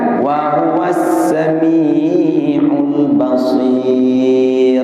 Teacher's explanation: jangan baca huruf ra yang dhammah tapi diwakaf, karena di belakang ada huruf baris bawah. Tak tafkhim dia, tapi tarkik.